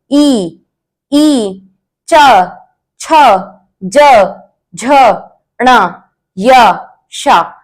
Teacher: तालव्य वर्णा यानी इनको तालु से बोला जाता है। ई तो जीभ को देखो दोनों साइड से वह टच होती है।